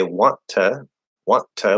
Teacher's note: you stop the first t right because the T at the end of a word can be stopped or held and then push out the second T